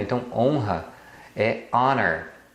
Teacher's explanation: Então também você não pronuncia o H, por isso que o primeiro som é de uma vogal e você usa an. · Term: H é mudo